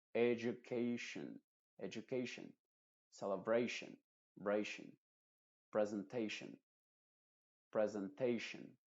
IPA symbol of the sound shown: ə